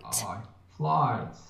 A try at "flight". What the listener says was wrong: Fly. So I want you to just generally your accent's quite far back. Oh, it's a little bit swallowed.